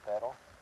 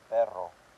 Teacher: You don't roll the R with the regular R, just a simple R. You roll the R with a double R.